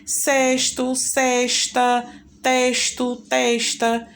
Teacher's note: Isso vai da regionalização, tá? Nós moramos em uma região onde muitas vezes nós pronunciamos o S com esse sonzinho meio que fosse de X.